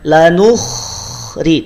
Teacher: kho dia punya sifat isti'la, maka naikkan pangkal lidahnya. Jangan sampai tidak dinaikin pangkal lidahnya.